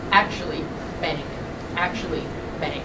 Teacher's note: this is called a nasal raising pattern because the vowel raises before a nasal consonant